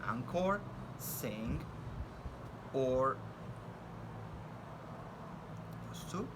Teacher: N, which is a voiced velar nasal sound